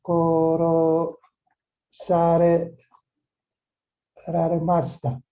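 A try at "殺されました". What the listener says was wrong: That's too many rares. Korosaremashita. Korosaremashita. only one too many.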